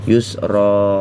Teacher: tanwin dibuang apabila dalam keadaan diwakafkan atau berhenti ya. Yusra, dan dibaca panjang 2 harokat.